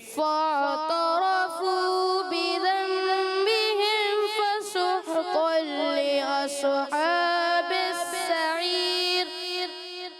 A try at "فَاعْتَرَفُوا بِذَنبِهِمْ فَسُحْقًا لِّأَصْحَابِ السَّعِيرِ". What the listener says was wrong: آپ سے پھر وہی غلطی ہوئی ہے. فسحقا فسحقا لأصحاب صاد کو بھی ہلایا ہا کو بھی آپ نے ہلانا نہیں ٹھیک ہے. فاعترفوا بذنبهم فسحقا لأصحاب السعير. فاعترفوا میں فاعترفوا عین کو نہیں ہلانا. فاعترفوا را تا موٹا نہ ہو را موٹا ہوگا.